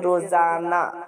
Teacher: اس ہا کی آواز محفوظ نہیں رہتی ہے، اس ہا کی آواز کو، اس کے ساؤنڈ کو ظاہر نہ کرنا اور کرنا دونوں برابر ہو، ایسے ہا کو ہائے مختفی کہتے، جیسے روزانہ۔